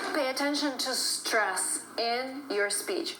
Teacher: I've emphasized the word stress because I want your attention on this word